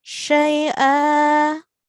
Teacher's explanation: I'm going to prolong the hamza sound for 2 seconds